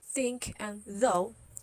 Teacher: these are interdentals so these are in between your teeth